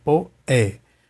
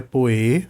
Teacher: Não é poê, né? Não é um som fechado. Não é poê, é poé, poesia.